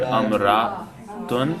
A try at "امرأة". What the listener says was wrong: The first letter there is a kasra. Not a hadihi, and then it's a kasra for the second word.